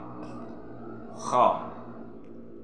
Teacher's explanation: Kha ini makhrajnya di ujung tenggorokan.